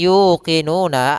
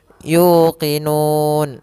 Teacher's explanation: Contoh di sini yuqinuna, asalnya yuqinuna, karena kita waqaf maka dia berubah menjadi yuqinun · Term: mad arid lisukun